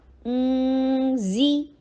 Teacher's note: اون حمزہ کے لیے ضمہ، ہونٹوں کو گول کیا جائے گا اور نون کے اوپر ساکن ہے تو واپس ہونٹوں کو لایا جائے گا. اون زی، زا کے نیچے کسرہ، ای کی ساؤنڈ کی جائے گی اینڈ شارٹ